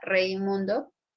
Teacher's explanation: La palabra Raimundo no se escucha la Y de yo, sino la I, débil, cerrada. Por eso se presenta el diptongo decreciente o descendente, porque no interesa cómo se ve, sino cómo se escucha.